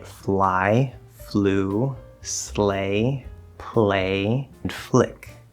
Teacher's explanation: But even though the L isn't the first sound in the word or of the syllable, when we have cases like this where it's like some consonant sound plus L, and it's not necessarily just L right there in the front, but it's almost like a combination of consonant plus L sound as one unit at the start of a syllable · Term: full L